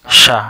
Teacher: Ujung lidah bertemu dengan pangkal gigi atas.